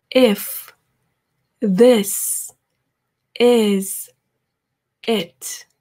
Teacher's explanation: 우리나라 말에 이랑은 조금 다르죠. 이랑은 다르고 이도 아니고 에도 아닌 어떻게 보면 또 으 소리가 나는 것 같기도 한 우리나라에 없는 소리고요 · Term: pink